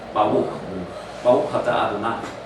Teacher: It's a soft R on the back of the throat that sounds like a W to me.